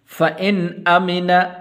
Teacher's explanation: غنہ نہیں کریں گے اس لیے کہ آگے حمزہ حروف حلقی میں سے